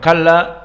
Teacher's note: kaf huna kaf muraqqaqah dan lam kadalik muraqqaqah, wa lam huna musyaddadah kalla, wal alif kalla kadalik muraqqaqah yatba lam mengikuti lam, dan alif mad tabi'i karena dia alif sakinah sebelumnya fathah kalla.